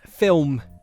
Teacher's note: So, for example, the word film might have a very audible L sound. However, in this accent, the L is changed to a W, so film becomes film.